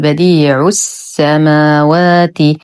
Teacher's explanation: اللام شمسيه مدغمه بالسين وهمزه الوصل تسقط في درج الكلام فنقول بديع السماوات ولا نقول بديع السماوات بتمط العين وهذا خطا